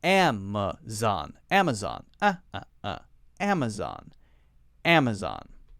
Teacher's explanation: One is a clear short A sound. The other one is more like the schwa sound.